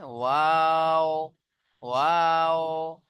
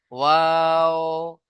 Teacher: দুই ঠোঁট না মিলে উচ্চারণ হয় মাঝখান থেকে